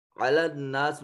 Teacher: علی الناس میں نون مشدد ہے، غنہ واجب ہوگا